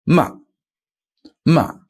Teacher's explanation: it goes even slightly above first tone but definitely at the limit of your vocal range and then straight down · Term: fourth tone